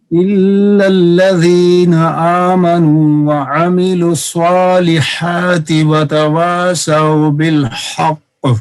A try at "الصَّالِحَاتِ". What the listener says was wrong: ایک تو لام کو صاد سے صحیح جماؤ کریں اور دوسرا صاد کو پر کریں إلا الذين آمنوا وعملوا الصالحات وتواصوا بالحق جی